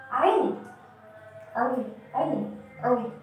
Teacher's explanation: Ketika kita bisa merasakannya ada getaran di tengah-tengah tenggorokan, berarti itu sudah termasuk ke dalam makhraj wastul halqi